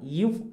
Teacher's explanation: மேல்வாய்ப்பல்லை கீழ் உதடு பொருந்துவதால் இவ் உருவாகின்றன.